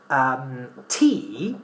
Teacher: So when we pronounce the sounds or the consonants p, t, k, we should make sure that there is some sort of explosion in our mouth, that we exhale much more air than we do in Spanish.